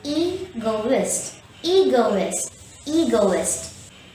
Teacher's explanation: The first syllable E is stressed, so say egoist.